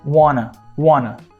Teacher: o n que tem o mesmo ponto de articulação do te